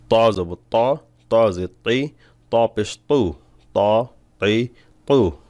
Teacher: ত মোটা হবে সদের মতন জিহ্বার গোড়ার উপরের দিকে উঠবে এই হরফগুলো হলো ইস্তেআলার অক্ষর যখন বলবেন একটু গলায় চাপ দিয়ে